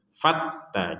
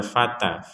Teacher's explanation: Fatta, jadi bukan sekedar fata, harus ada tekanan.